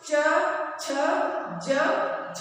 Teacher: ई च वर्ग य और श का उच्चारण स्थान तालु है।